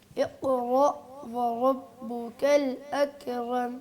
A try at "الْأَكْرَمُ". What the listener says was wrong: ابھی بھی کاف کو ہلا رہے ہیں. اکرم.